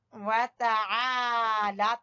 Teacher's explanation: لام کو کھینچیں گے الف مدہ کی وجہ سے، کھڑی زبر کی وجہ سے